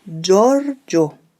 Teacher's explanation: You have to put a little accent on the first O. Giorgio. Make sure to correctly roll the R.